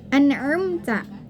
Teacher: Di sini sudah jelas, nun mati bertemu dengan ain, maka itu dibacanya harus jelas, tidak boleh didengungkan dan tidak boleh disamar-samarkan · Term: izhar